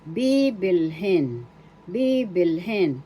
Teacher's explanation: First syllable B is the accent.